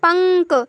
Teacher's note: देखिए नासिका अनुस्वारस्य अनुस्वार का उच्चारण स्थान होगा नासिका यानी कि नाक।